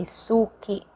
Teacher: the accent is in the first syllable, su. For us, suki.